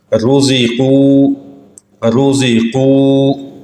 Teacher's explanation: را کے اوپر پیش ہو تب بھی را موٹی پڑھی جائے گی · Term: را کی تفخیم